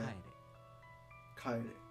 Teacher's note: kaeru turns into kaere. So the accent falls on ka.